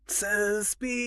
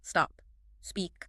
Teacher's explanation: The intrusive epenthetic E is a voice vowel, meaning it requires immediate vocal fold vibration. And the S is a voiceless fricative, requiring the folds to remain open and still. By forcing the learner to sustain that elongated sound, the drill acts as a physical override for the larynx.